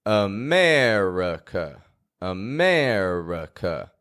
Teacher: America is full of schwas. It's got 3 of them. Only the air in the middle is getting, a strong vowel sound.